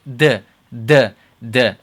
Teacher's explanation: the tongue touches the back of the teeth on the front, on the top row, the back of the front two teeth. Your tongue touches there. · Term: dal